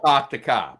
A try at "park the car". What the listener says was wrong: It's not park. Not park. There's no R's. No R's whatsoever. You had an R in there the first time.